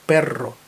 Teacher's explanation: Перро звучить із подвійним р розкатистим іспанським р якого немає в інших мовах і його Саме так треба вимовлять Перро не перо а Перро